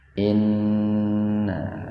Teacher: nun bertasdid itu gunna, mendengung